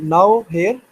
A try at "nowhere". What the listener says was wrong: So you put the separation at different or you broke a difference. So it's now you said now here, but it's nowhere.